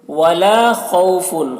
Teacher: خا کو پر پڑھیں گے کیونکہ خا بھی حروف مستعلیہ میں سے ہے